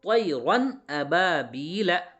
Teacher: یعنی اظہار کا ہوگا کیا مطلب، اظہار ہوگا اس کا کیا مطلب، یعنی نون کی آواز کو ظاہر کر کے بغیر غنہ کے جلدی پڑھیں گے